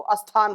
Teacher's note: बिहार में कुछ ऐसे जो है जिले हैं वहां स्थान को अस्थान बोलेंगे